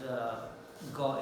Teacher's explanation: The back of the tongue goes to the velum, and they come against each other and they block the passage, then there is sudden release. So when the air is released, the sound is kind of plosive sound. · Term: velar plosives